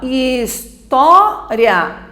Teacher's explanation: Na posição que está, a nossa tônica é o tó. Então, é considerado uma paroxítona.